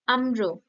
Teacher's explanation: আম্র শেষে যে র টা আসছে সেই র এর উপর শ্বাসবায়ু বা শ্বাসের জোর কমে আসছে ফলে সেই র টা ক্ষীণ হয়ে আসছে · অর্থাৎ এখানে যে আম্র, তোমরা নিজেরাই উচ্চারণ করো না, আম্র, কি হচ্ছে, আম, ময়ের ওপর আমরা শ্বাসাঘাতটা জোরে ফেলতে পারছি, তাই তো? এবং আম্র, শেষে যে রটা আসছে সেই রর ওপর শ্বাসবায়ু বা শ্বাসের জোর কমে আসছে। ফলে সেই রটা ক্ষীণ হয়ে আসছে উচ্চারণ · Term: ব্যঞ্জন ধ্বনিটাকে বর্জন